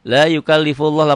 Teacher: lafaz Allahnya dibaca tebal tafhim. Kenapa? Karena sebelum lafaz Allah baris di atas domah.